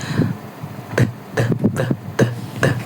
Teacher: Bukan depan bagian belakang itu disentuh oleh bagian ujung lidah. Nah, itu udaranya tertahan lalu lidah dilepas secara tiba-tiba